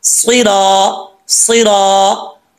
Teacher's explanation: सुई, सुई रा के ऊपर जबर है, आगे अलिफ है, एक अलिफ की मकदार इसको लंबा करेंगे। रा के ऊपर जबर है, पुर पढ़ा जाएगा, मोटा पढ़ा जाएगा।